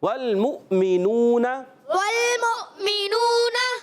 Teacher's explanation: تو اس میں جو ہے یہ حمزہ کو جھٹکا دے کے پڑھتے ہیں. کچھ روایتیں ایسی بھی ہیں جس میں اس حمزہ کو واو سے بدل دیتے ہیں، جیسے آواز آئے گی والمومنون، ایسا بھی ہے، تو اس وجہ سے ہی واو بھی ہے، تو یہ حمزہ واو میں تبدیل ہو جاتا ہے.